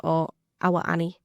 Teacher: So what you're doing there is you're saying 'our' as two syllables